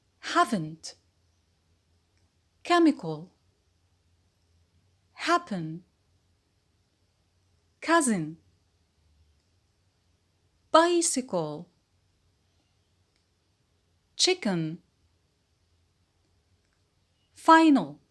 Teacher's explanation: usually without a schwa between the 2 consonants at the end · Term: syllabic consonant